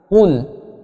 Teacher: Penyebutan kata qul itu makhrajul huruf qaf harus ditengkorokan. Agar apa? Agar pada saat kita menyebut lafaz huruf qaf itu keluar dengan sempurna.